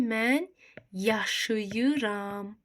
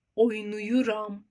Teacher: Zaman şəkilçisindən qabaq bu gəlib deyə, A-ə saiti gəlib deyə, tələffüzdə A keçəcək I-yə. Yaşayıram bu formada olacaq. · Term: qapalı saitə keçəcək